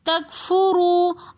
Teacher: تکفرو رو کے اوپر پیش ہے تو اس لیے ہم اس رو کو موٹا کر کے پڑھیں گے۔